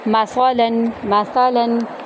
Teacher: تا کو ہم نرمی سے پڑھیں گے اور میم کو لمبا نہیں کرنا